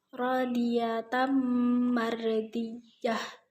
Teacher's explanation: bacaan Idgham Bighunnah yaitu mendengung karena ada fathah tanwin bertemu dengan mimpi Sekian dari saya Apabila · Dan yang terakhir, yang ke-12 terdapat pada ayat 28, yaitu radiyatam mardiyah, yang disebut dengan bacaan idgham bi gunnah, yaitu mendengung karena ada fathah tanwin bertemu dengan mim.